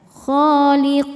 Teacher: Huruf yang disukunkannya huruf nun. Maka huruf qof-nya panjang boleh dua atau empat atau enam harakat. Asal konsisten dalam sekali baca. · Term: mad arid lukun